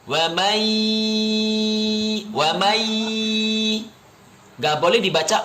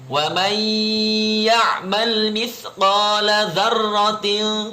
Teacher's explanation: Waman nun sukun bertemu dengan ya. Waman ya'mal dibacanya dengung. Wa may gak boleh dibaca waman, gak boleh.